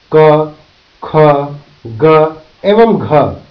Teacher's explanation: तालव्य, जब जीभ का मध्य भाग कठोर तालु को स्पर्श करके वायु को रोकता है, तो निकलने वाली ध्वनि तालव्य ध्वनि कहलाती है, जैसे च, छ, ज एवं झ तालव्य ध्वनियां हैं। कंठ वेलर, जब जीभ का पश्च भाग कोमल तालु को स्पर्श करते हुए वायु को रोककर ध्वनि निकलती है, तो इसे कंठ ध्वनि कहते हैं, जैसे क, ख, ग एवं घ कंठ ध्वनियां हैं।